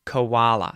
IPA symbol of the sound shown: ə